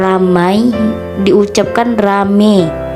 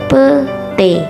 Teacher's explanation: Perubahan ini terjadi pada bunyi vokal rangkap AI ke vokal tunggal E. Penulisannya pun disesuaikan menjadi rame dan pete. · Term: monoftongisasi